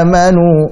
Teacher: Nah, ini kepanjangan. Harusnya amanu 2 harakat saja cukup. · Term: mad badal